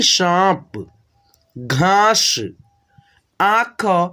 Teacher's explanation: चंद्रबिंदु की मात्रा उच्चारण करना होगा नाक से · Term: अनुनासिक